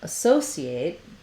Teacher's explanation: our letter A, our first vowel, is going to be vowel schwa. It's short and a reduced vowel. So it can help to start the word on that stress syllable.